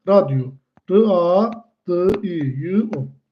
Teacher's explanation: Ortasına Y samitini əlavə edirik. · Sadəcə olaraq bunları tələffüz eləyəndə bu iki dənə saitin arasına y samitin əlavə eləyirik.